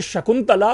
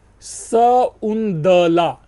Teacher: अब आप पाएंगे शकुंतला, तो उसके लिए आप विज्ञान और शाकुंतलम में लिखा हुआ पाएंगे सउंदला। जो तला है उस तला त की जगह पर द हो जाता है